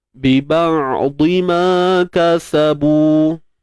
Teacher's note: huruf ain ni dia tak mengalir sangat, tak tertahan sangat. Dia tengah-tengah. Itulah yang dinamakan ataupun dimaksudkan dengan tawassut.